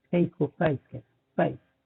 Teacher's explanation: अभी जो मैंने आपको कॉकनी की मिसाल दी यही इस पे भी साबित आती है, यही इस पे भी अप्लाई होती है, क्योंकि कॉकनी ही जाके ऑस्ट्रेलिया में शुरू में उन्होंने ऑस्ट्रेलिया को आबाद किया, इसलिए ऑस्ट्रेलियन ही फेस को प्राइस कहते हैं, प्राइस थोड़ा सा उसको लंबा कहते हैं, गोट को गाउट कहते हैं। तो इन दोनों डिफथॉन्ग्स को वो थोड़ा लंबा कर देते हैं।